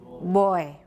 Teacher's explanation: Right, it's very fully voiced, large negative VOT.